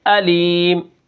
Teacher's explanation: دو زیر کے اوپر ہم نے وقف کیا، علی من سے علیم کر دیا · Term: وقف بالاسکان